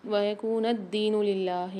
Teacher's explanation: اللہ کے لام کو باریک پڑھیں گے کیونکہ لام سے پہلے زیر ہے